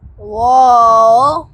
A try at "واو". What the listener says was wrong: अच्छा वाव की आवाज आनी हमजा की आवाज नहीं लगानी वाव है हमजा